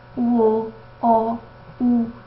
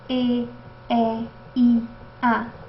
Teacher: a gente observa que as vogais não arredondadas os lábios estão estendidos e as vogais arredondadas os lábios né Tem uma protusão que